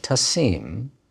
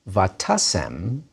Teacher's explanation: the accent on the imperfect tasim moves backward when you make it a converted imperfect and the long e vowel becomes a short e